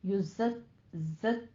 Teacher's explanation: ज़य की सीटी की आवाज भी आएगी, काफ पे तशदीद अदा कीजिए और फिर या इस साकिन को खींचना है, थोड़ा सा 2 काउंट करना है, 2 हरकतों बराबर।